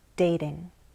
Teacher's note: Note in dating, we use a flap T, dating.